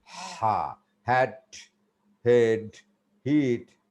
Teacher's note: it comes just directly from the vocal cords